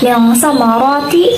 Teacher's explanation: Pertama, jika nun sukun bertemu dengan salah satu huruf ikhfa, misalnya yang sama roti, yakni nun sukun bertemu dengan huruf ta, maka dibacanya samar atau berdengung, ataupun pembacaannya itu seperti mengucapkan kata ang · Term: bacaan ikhfa